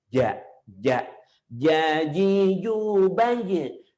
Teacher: Jadi bukan ja, bukan makhrajnya itu keluarnya tuh bukan di gigi. Malah nggak ada peran gigi sama sekali.